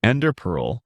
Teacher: people say ender pearl with emphasis on the first word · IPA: /ˈɛndər pɜːrl/